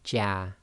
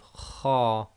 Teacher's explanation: The letter Jim with Fathah gives a light sound, so it gives the sound of Ja. The letter Kha with Fathah gives a heavy sound, so we get the sound of Kha.